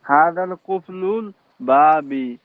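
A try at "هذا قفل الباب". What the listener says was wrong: হাজাল না তো, আলিফ লাম নাই তো। হাজা কুফলুল বাবি।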